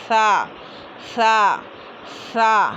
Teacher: ज़बान की नोक सामने के ऊपर वाले 2 दांतों के किनारे से अदा होता है